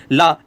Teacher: ला का उच्चारण करते समय हमारी सांस जीभ के बगल पार्श्व से गुजरती है, इसलिए इसका नाम पार्श्विक हो गया ला। · ला जब आप बोलोगे तो आपकी जीभ फोल्ड हो जाती है, क्योंकि जीभ का नुकीला हिस्सा ऊपर लगता है, ला ला ला, और ये फोल्ड हो जाती है, और इधर जो बीच में जो हवा किनारे में बचती है वो पार्श्व से हवा निकल जाती है, इसीलिए उसको क्या है, जीभ ऐसी हो जाती है और यहां से हवा निकल जाती है आगे से पीछे से, है ना। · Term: पार्श्विक व्यंजन